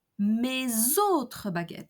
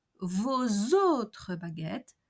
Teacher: Each time the possessive adjectives ends with an S, we have a Z pronunciation liaison.